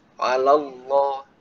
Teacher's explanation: Jadi dia dibaca tebal lamnya. Allah. Nah, karena dia huruf lam, maka ya mungkin sudah sering diingatkan ya masalah ismul jalalah ini jangan sampai dia terucap dengan huruf dengan bibir ya.